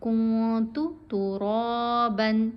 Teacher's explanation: نون کی آواز کو ناک میں چھپانا ہے